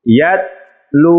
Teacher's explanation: لام کو ہم نے لمبا کیا ہے اس لیے کہ لام کے بعد واو جو ہے وہ ساکن ہے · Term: واو مدہ